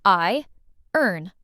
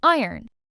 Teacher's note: This word looks like it should sound like iron, but it doesn't. We say iron. The O almost disappears.